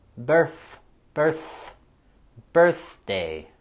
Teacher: we have the voiceless th sound in Birthday